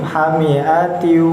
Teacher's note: dengungnya itu yang enggak terlalu banyak di hidung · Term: idgham